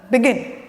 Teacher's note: the stress falls on the last syllable